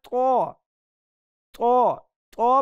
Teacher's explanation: इसके साथ जिसका फर्क करना है वह है तो तो तो पढ़ते हुए जुबान की अगली नोक दांतों ऊपर वाले दांतों के अंदर चिपका के इसको पढ़ते हैं तो यह इसका साउंड ठीक हो जाता है तो ता ठीक